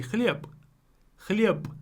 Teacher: So we replace the voiced consonant with the voiceless pair. Why? Because it's at the end of a word.